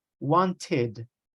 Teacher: want finishes with a t sound so the E D sound is going to sound like ID